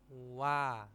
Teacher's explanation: u agak pendek a-nya baru agak panjang